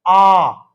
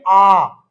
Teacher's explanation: जैसे एक ही स्वर है आ, अर्थात आ को बोलने में देखिए मुंह पूरा खुला है, इसलिए विवृत है।